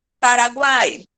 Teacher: três vogais na mesma sílaba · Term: tritongo